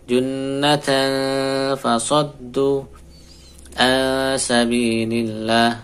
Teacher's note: ini tidak ee menutup bibirnya tapi dibuka tetap bibirnya